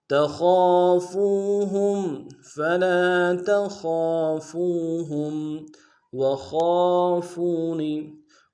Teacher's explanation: ہا کو میم ساکن کے ساتھ ملانا ہے، میم ساکن میں غنہ کریں گے